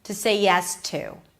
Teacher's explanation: The word to is not reduced when it's at the end. So you pronounce it with a pure ooh sound. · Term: pure oo sound